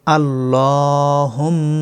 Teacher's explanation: মিমের উপরে ওয়াজিব গুন্না এক আলিফ পরিমাণ